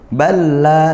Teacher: Langsung masuk ke jadi satu seperti itu karena lam bertemu lam hurufnya sama. Secara praktik mudah, hanya ada teori dia namanya mutamatsilain, dua huruf yang sama yang bertemu ya. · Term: idgham mutamatsilain